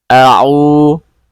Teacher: ada ain berharokat dhammah bertemu dengan waw sukun atau waw sukun yang sebelumnya berharokat dhammah, maka disebut mad asli atau mad tabi'i, panjangnya 2 harokat. Au, seperti itu ya, 2 harokat saja.